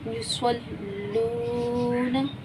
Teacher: वाव साकिन है, उससे पहले पेश है तो वाव मद्दा हुआ, इसे एक अलिफ की मिकदार खींचेंगे।